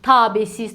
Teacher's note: A və e-nin uzanmasının şahidi olacağıq.